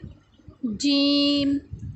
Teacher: جیم وسط زبان اور بالمقابل اوپر کے تالو سے